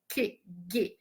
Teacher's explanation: O Q e G, você já vê que a língua, o dorso da língua, ela sobe, né? Esse dorso faz que, G, ele sobe e encontra ali o palato, né?